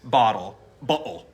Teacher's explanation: you hear that extra T in a way that it's not usually heard in American English, but you do have that space in in between them.